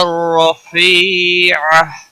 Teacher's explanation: را کے اوپر زبر ہے اس لیے را کو پر پڑھا جائے گا، موٹا پڑھا جائے گا۔ فی یا مدہ ہے، ایک الف کے برابر کھینچ کر پڑھیں گے، باقی کسی بھی حرکت والے حرف کو کھینچنا نہیں۔ · والصلاة القائمة آت محمدا الوسيلة والفضيلة والدرجة الرفيعة، دال کے اوپر تشدید ہے، تھوڑا سختی کے ساتھ پڑھیں، را کو زبر کی وجہ سے پر پڑھا جائے گا، جتر را کے اوپر زبر ہے اس لیے را کو پر پڑھا جائے گا، موٹا پڑھا جائے گا۔ فی یا مدہ ہے، ایک الف کے برابر کھینچ کر پڑھیں گے